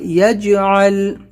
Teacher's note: جیم پہ قلقلہ ہے، یجعل، یہاں پر لام کے اوپر قلقلہ نہیں کرنا ہے